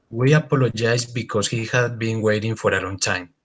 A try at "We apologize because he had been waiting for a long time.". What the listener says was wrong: Very good.